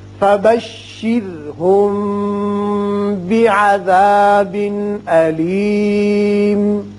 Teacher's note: اب یہاں میم ساکن کے بعد با آتا ہے، لہذا یہاں اخفاء شفوی ہوگا. یہاں تنوین کے بعد حمزہ ہے، لہذا یہاں اظہار حلقی کریں گے